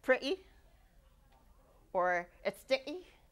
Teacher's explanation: those would be glottal stops where the airflow is stopped right at the glottis